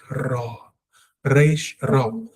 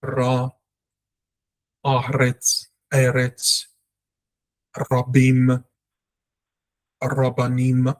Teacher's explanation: So your tongue has to be rounded off and it must vibrate.